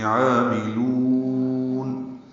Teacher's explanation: عاملون میں عین کو 2 حرکات لمبا کریں گے، الف مدہ ہے، کھڑا زبر قائم مقام مد اصلی عین وسط حلق سے ادا ہوگا، میم کو جلدی سے پڑھیں گے اور لام کو لمبا کریں گے۔